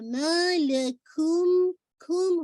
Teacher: آپ نے آواز کو جو میم ساکن کی اس کے اندر مرج کرنا ہے پورا. ٹھیک ہے, اور آپ اس کے اندر کون سا غنہ کریں گے, موسٹ کمپلیٹ غنہ, اکمل غنہ. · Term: ادغام میم شفوی